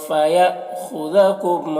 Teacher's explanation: بسو یہاں میں جو مد ہے یہ مد متصل ہے اور حمزہ میں جو تنوین ہے اس میں اخفا ہوگا. یہاں پر حمزہ ساکنہ ہے تو جھٹکا لگے گا